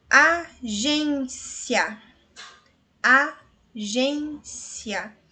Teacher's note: no final eu pronuncio ya, está junto, na mesma sílaba